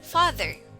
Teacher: Sound A is an open back unrounded vowel, as in father. The tongue is really flat in the mouth.